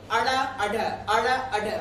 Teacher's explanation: आपकी जो जीभ की नोक है ये आपके मूर्धा को स्पर्श करके झटके से नीचे गिरती है। इस कारण इसे बोला जाता है उछाला हुआ। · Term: उच्छिष्ट व्यंजन